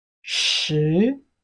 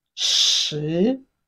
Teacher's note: what we have there is sh sound, sh, with a rising tone.